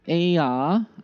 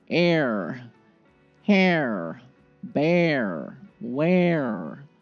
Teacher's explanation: Again, heavy R, and you can see it's changing the vowel sound completely. Totally different vowel.